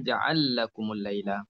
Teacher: Dan kemudian ada idgham kabir, ja'ala lakum. Idghamkan lam dalam lam